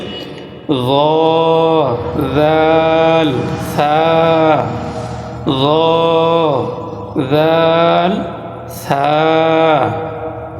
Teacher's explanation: জিহ্বার আগা সামনের উপরের দুই দাঁতের আগার সঙ্গে লাগাইয়া 3টি হরফ উচ্চারিত হয়, সেটি হচ্ছে গ, দাল, সা। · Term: 13 নম্বর মাখরাজ